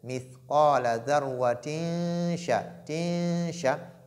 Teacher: Shin fait partie des lettres de al-ikhfa qui est la dissimulation.